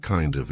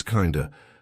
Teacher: Instead of kind of. Again, we're turning that of into a schwa, so it's not kind of, it's kinda